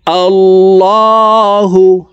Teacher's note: তো এখানে দেখুন আল্লাহ শব্দের আগের হরফে জবর থাকার কারণে এই লামকে ল অর্থাৎ মোটা করে পড়ব।